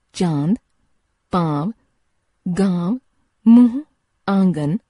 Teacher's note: अनुनासिक इस ध्वनि का उच्चारण नाक और मुंह द्वारा किया जाता है। इसका चिन्ह चंद्रबिंदु है।